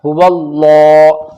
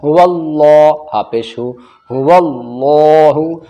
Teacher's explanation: یہ اللہ کا لام موٹا پڑھا جائے گا کیونکہ اللہ کے لام سے پہلے واو کے اوپر زبر ہے